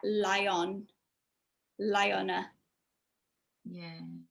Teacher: it sounds like lion so the reason for this is that when we have an i sound at the end of a word that vowel that diphthong i and then we've got the next word with the vowel we get like a yeah sound that goes in the middle · we've got the next word with a vowel, we get like a y sound that goes in the middle. So we get lion, liona. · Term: connected speech